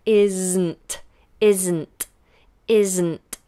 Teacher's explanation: the tongue stays up on the Z into the N.